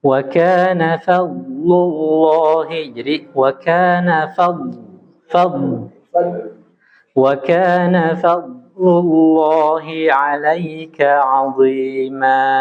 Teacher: Huruf bod dia punya sifat isti'la ya, tebal ya.